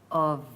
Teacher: It's pronounced a V with a vibration.